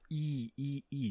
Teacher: quando você pronuncia i a língua tá pertinho do palato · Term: vogal palatal